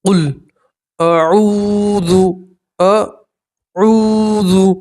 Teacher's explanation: واو مدہ میں 1 الف کے برابر کھینچ کر پڑھا جاتا ہے